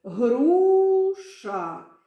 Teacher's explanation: на перший склад у нас іде наголос